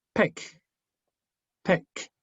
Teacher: T, yes, no vibra. La sonido K no vibra.